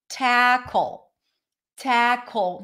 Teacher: Notice that the L in English, when it's at the end, is a dark L. · The word tackle starts with a T sound. It's an aspirated T, by the way, so you'll hear a little puff at the beginning.